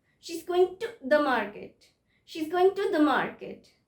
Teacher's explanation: Pronunciation of to and to, it's different. So when I'm saying to, she's going to the market, it's just a ta.